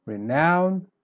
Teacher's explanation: Then renown, here's the opposite. So you start weak and then you go strong